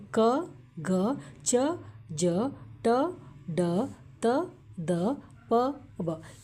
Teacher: ಅಲ್ಪ ಅಂದರೆ ಸ್ವಲ್ಪ ಉಸಿರಿನಂತೆ ಹೇಳುವಂಥ ಅಕ್ಷರಗಳಿಗೆ ಏನು ಹೇಳ್ತೀವಿ ನಾವಿಲ್ಲಿ ಅಲ್ಪ ಪ್ರಾಣ ಅಂತ ಹೇಳ್ತೀವಿ